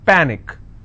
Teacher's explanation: panic is per nick which means i will stress on pa